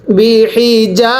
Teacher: হি বি হি জিম আলিফ জবর যা এক আলিফ টানতে হবে জবরের পরে খালি আলিফ এক আলিফ টানতে হয়